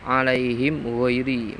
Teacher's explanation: mim mati bertemu ghain juga dibaca izhar izhar syafawi